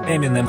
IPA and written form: ˌɛmɪˈnɛm (Eminem)